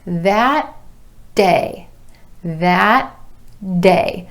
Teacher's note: the tongue goes up behind the teeth to the alveolar ridge for that final T, and then just releases into the beginning D for day.